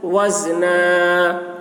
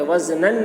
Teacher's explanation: یہاں پر وقف کر رہے ہیں تو وزنا پڑھیں گے، وزنن نہیں پڑھیں گے۔ اولئک الذین کفروا بآیات ربهم ولقائه فحبطت اعمالهم فلا نقیم لهم یوم القیامت وزنا ذلک جزاؤہم، الف میں مد ہے کھینچیں گے۔